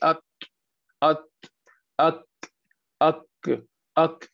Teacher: جو تا اور کاف والے حروفوں میں ضروری کہ ہوا ضرور باہر آئے، ایئر مسٹ کم آؤٹ۔ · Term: ہمس کے حروف